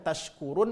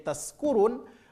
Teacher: Kalau shin tempat keluar hurufnya adalah tengah lidah, sedangkan huruf sin tempat keluar hurufnya adalah ujung lidah.